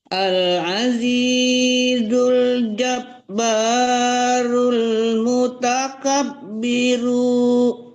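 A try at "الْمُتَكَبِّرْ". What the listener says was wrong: Mutakabbir dimatikan rnya berhenti di situ.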